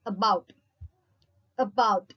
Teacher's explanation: central unrounded vowel between half close and half open position